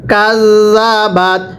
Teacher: এটাকে কাজা পড়া যাবে না, জালটা নরম করে পড়তে হবে। আর জালটা উচ্চারণের সময় আপনার জিহ্বাটাকে দাঁতের আগার সাথে লাগাবেন।